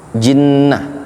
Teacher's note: Ada ghunah ditahan dua dua harakat